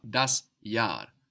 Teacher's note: that H just stretches out that vowel